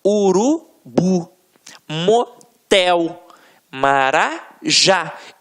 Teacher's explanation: Reparem que na hora da pronúncia, de forma mais aguçada, você vai perceber que realmente a pronúncia da última sílaba ficará mais forte. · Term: oxítonas, oxítona